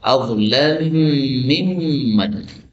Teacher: mim ketemu min adzlamu min. Nah, ini boleh dibaca idgham adzlamu mimman